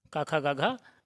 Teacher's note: कंठ उच्चारण स्थान होता है क वर्ग का